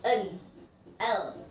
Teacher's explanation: The fourth is alveolar, that consonant that produced by gum ridge and the tip and the blade of the tongue is like n, l.